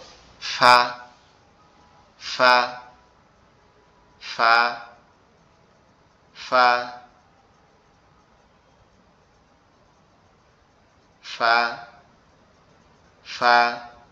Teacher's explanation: আমাদের উপরে দুই দাঁত। এই নিচের ঠোঁটের পেটের সঙ্গে লাগবে। লেগে উচ্চারিত হবে